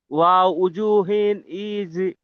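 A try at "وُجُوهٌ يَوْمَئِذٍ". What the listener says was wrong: ওয়াও বলছেন কেন? উজু হুই ইয়াউমা ইদিন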